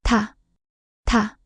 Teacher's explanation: Similar to t and top, but strongly aspirated. Stronger and more pronounced than tu.